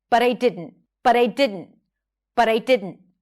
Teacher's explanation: When the tea is between two vowels, you flap it. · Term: flap t, flap T